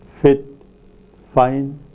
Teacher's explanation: Labiodental, produced with the lower lip and the upper teeth.